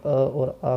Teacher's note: अ और आ कंठ से बोलते हैं